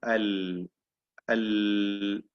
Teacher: ഉദാഹരണമായി ലാം ഉച്ചരിക്കുമ്പോൾ, ലാം ഉച്ചരിക്കുമ്പോൾ അൽ എന്ന് പറയുമ്പോൾ അവിടെ നാവിന്റെ അറ്റം തടസ്സമായി നിൽക്കുന്നതിനാൽ ശബ്ദം ഭാഗികമായി ഒഴുകുന്നു എന്നാണ്. നാവിന്റെ അഗ്രം ഇങ്ങനെ തടസ്സമായി നിലനിൽക്കുന്നതിനാൽ ശബ്ദം ഭാഗികമായി ഒഴുകുന്നു. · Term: ബൈനിയ്യ